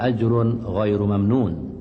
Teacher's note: Tanwin baris dua bertemu dengan huruf ghain, hukumnya izhar dan hendaklah dibunyikan tanpa dengung, dibaca dengan terang, jelas dan nyata.